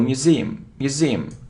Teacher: so you see that the stress is on the second syllable